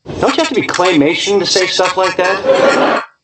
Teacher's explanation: we have stress on don't and no more stress until claymation